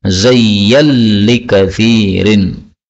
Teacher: Kemudian nun ketemu lam boleh idgham ya.